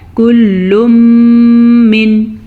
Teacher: تنوین کے بعد یمون میں سے میم آیا ہوا ہے تو ہم ان دونوں کو آپس میں ملائیں گے، غنّے کے ساتھ ملائیں گے، اسے کہتے ہیں ادغام بالغنّہ۔